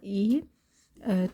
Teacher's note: qapalı saitdir. Uzun tələvüz olunmur, incə saitdir.